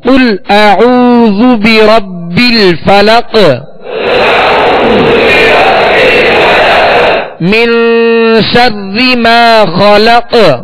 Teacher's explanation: اعوذ جب پڑھیں گے تو اعوذ اس میں ہونٹوں کو گول کریں گے، ہونٹوں کو کامل گول کریں گے ورنہ مجہول پڑھا جائے گا.